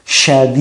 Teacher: Huruf syin itu desisannya ee dipertegas. Jadi sya tidak boleh sa sya tidak boleh ee sa begitu sadi tapi syadi syad.